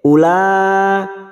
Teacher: ada mad bertemu dengan hamzah dalam satu kalimat mad wajib mutasil 5 harokat